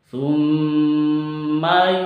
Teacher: Summa mim tasydid itu berlaku hukum gunnah, disebut gunnah maka dibaca dengung tiga ketuk.